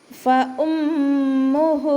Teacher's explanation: മീമിന് ശ്രദ്ധ വന്നിട്ടുണ്ട്, നല്ലോണം മണിച്ചു കൊടുക്കുക · ഹൻ്റെ കൂടെ വാവ് മദ് വന്നിട്ടുണ്ട്, വാവ് സ്വഗൈറയാണ് വന്നിട്ടുള്ളത്, അപ്പോൾ അവിടെ നമ്മൾ 2 കൗണ്ട് നീട്ടിക്കൊടുക്കുക